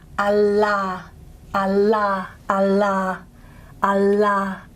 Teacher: Nice laminal dental there